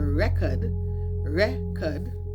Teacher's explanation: You hear the stress on the first syllable. So that's a noun.